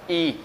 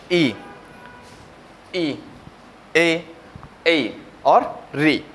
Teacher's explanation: ई का उच्चारण हो रहा है वो जीभ के आगे वाले भाग से, यानी कि जीभ के नोक से हो रहा है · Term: अग्र स्वर